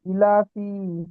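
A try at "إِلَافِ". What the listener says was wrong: ইলাপি, আমি টান দিয়ে পড়ছেন তো, আমি বলেছি টান না দিলে ভুল হবে পড়া, তাহলে ই, আমি কতবার বলছি, খেয়াল করে না পড়লে এরকমই হবে। ই লা ফি, আমি বলছি ইলাফি, ইলা, ইটা টানেই দিচ্ছেন না, হামজা খাড়া যে যে টান দিচ্ছেন না, খাড়া জের এখনই পড়লাম।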